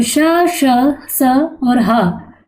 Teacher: जिन वर्णों के उच्चारण में गर्म ऊष्मा बाहर निकलती है वो ऊष्म व्यंजन कहलाते हैं।